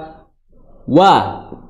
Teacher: Huruf wawu itu tempatnya adalah di kedua bibir.